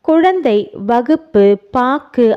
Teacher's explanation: அவ்வெழுத்து சொல்லின் முதலிலும் இடையிலும் வரும்பொழுது முழுமையாக ஒலிக்கிறது. சொல்லின் இறுதியில் வரும்பொழுது ஒரு மாத்திரைக்கு பதிலாக அரை மாத்திரை அளவே ஒலிக்கிறது. கு, சு, டு, து, பு, ரு ஆகிய 6 வல்லின உகரங்களும் சொல்லின் இறுதியில் வரும்போது ஒரு மாத்திரைக்கு பதிலாக அரை மாத்திரை அளவே ஒலிக்கும். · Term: குற்றிய லுகரம்